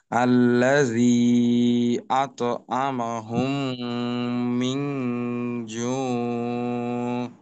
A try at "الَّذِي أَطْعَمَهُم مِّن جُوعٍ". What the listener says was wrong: হ্যাঁ, শেষে আইনকে স্পষ্ট করতে হবে। জু, জু, আরবির ক্ষেত্রে আওয়াজ, সব আওয়াজকে নাকে নেওয়া যাবে না। শুধুমাত্র নুন, মিম এবং গুন্নার আওয়াজ এগুলা নাকে যাবে, অন্য যে আওয়াজগুলি আছে ওইটা নাকে নেওয়ার কোনো সুযোগ নেই। যেমন ধরেন এইখানে জু,